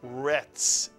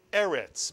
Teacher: the resh with the segol and the final Tzade, which makes the TZ, the ts sound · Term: final Tzadee